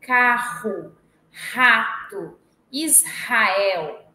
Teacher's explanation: o r forte é esse R fricativo